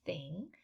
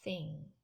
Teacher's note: your tongue is between your upper and lower teeth and it's voiceless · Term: voiceless th